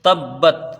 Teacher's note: تبت تا کو با سے ملا کے پڑھیں گے، با کو پھر تا سے ملائیں گے۔ خیال رہے کہ یہاں لوٹتی ہوئی آواز نہ آئے، قلقلہ نہ ہونے پائے۔